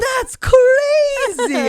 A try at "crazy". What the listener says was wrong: Your way of saying crazy, you add a syllable. in it. Crazy.